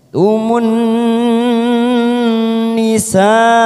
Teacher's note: ada mat yang bertemu dengan hamzah dalam satu kalimat, namanya mat wajib muttasil. Kita panjangkan selama 5 harokat.